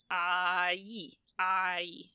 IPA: ai